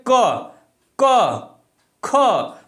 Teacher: जैसे हम देखेंगे क ख, तो ये क्या हो रहा है, कंठ से बोला जा रहा है, कंठ से, गले के माध्यम से, गले में प्रेशर दिया रहा है